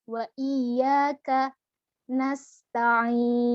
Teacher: ketika mengucapkan Nas biarkan nafas itu mengalir suara itu mengalir jangan diputus juga